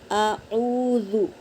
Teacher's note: اب دیکھو یہاں پہ حمزہ کے اوپر زبر ہے تو اسے جلدی پڑھیں گے آ، اور واو ساکن سے پہلے پیش ہے تو واو مدہ ہوا تو ہم او اس طرح ایک الف کے برابر کھینچیں گے، اور دال پہ حرکت ہے تو اسے جلدی پڑھیں گے۔